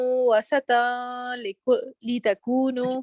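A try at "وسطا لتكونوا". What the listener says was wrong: اس کو آپ دیکھیں جب یہاں پر لام آ گیا نا تو اس میں instead of stretching you just connected directly. وسطا لتکونوا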